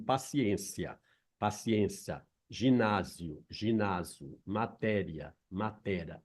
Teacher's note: o apagamento da primeira vogal do iato revela-se como forma menos prestigiada · O apagamento do hiato em formas como paciência, paciência, ginásio, ginásio, matéria, matera, em geral, são encontradas apenas entre falantes com menos escolaridade, o que demonstra que o apagamento da primeira vogal do hiato revela-se como forma menos prestigiada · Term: apagamento do iato